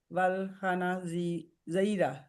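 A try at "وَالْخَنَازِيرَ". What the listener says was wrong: नून को लंबा करना है, उधर से। वल खनाजीरा, जीरा, वल खनाजीरा।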